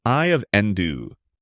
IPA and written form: aɪ əv ˈɛndə (Eye of Ender)